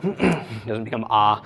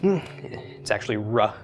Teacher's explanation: But anyway, in modern Hebrew, it's simply pronounced as an R, as we think of an English R. Although it would be the Midwestern pronunciation of an R, not the Great Britain, New York, or any other dialect's pronunciation